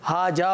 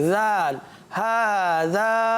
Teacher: تو دیکھیے زال ہے, زال کا مخرج ہے زبان کا سرا اوپر کے دانتوں کے اندرونی کنارے